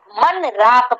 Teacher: اب آپ کو یہاں نون کو ظاہر کر کے پڑھنا ہے، من راق پڑھنا ہے، من راق، نون کو ظاہر کریں گے، ٹھیک ہے؟ نون میں یہاں پر غنہ آپ کا ظاہر نہیں ہوگا بلکہ نون کو صاف صاف پڑھا جائے گا، من راق، اس طرح پڑھیں گے۔